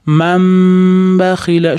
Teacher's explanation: Ya'ni iqlob qoidasi. Nunni mimga almashtirib olamiz. Qachon b harfiga yo'liqsa, ya'ni nun b harfi bilan bir joyda kelib qolsa.